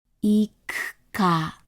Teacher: the U is between two Ks, two unvoiced consonants. Thus, the U gets devoiced. We do not engage our vocal cords when saying it.